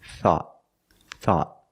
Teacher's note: At the end, the tongue goes up and makes a stop T. Not thought, but thought.